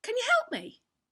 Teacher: behind it intonation is the rise and fall of the voice there's a clear movement up when we ask a question